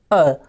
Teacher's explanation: मध्य या उदासीन स्वर का एग्जांपल है अ